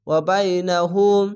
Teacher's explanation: বাইনাকুম, বা ইয়ে বাই, নুন যাবার নাম, বাইনা, কাপ মিম পেশ কুম, বাইনাকুম। ওয়া বাইনাহুম, উল্টা পেশে এক আলিফ টেনে পড়বেন।